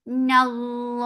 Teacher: Noon is light, but lafz jalala will be heavy because there is fatha before it. And by default, this is always long, and this 2 counts long.